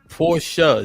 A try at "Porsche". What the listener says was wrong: No, not a Y. Porsche.